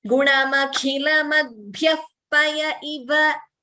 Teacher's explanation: there is a visarga followed by pa. So the upadhmaniya should be heard clearly.